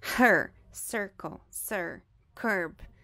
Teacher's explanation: Então, esse aqui é o bossy R. As vogais, quando as vogais E, I e U, quando estiverem junto do R, vão ter o mesmo som.